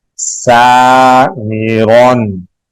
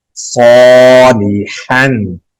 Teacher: سین باریک آواز سے، صاد موٹی آواز سے